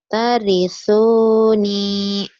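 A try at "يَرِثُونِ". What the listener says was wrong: Iya toh Mbak, masa tambah kalau titiknya di bawah. Yarisuni, yarisuni.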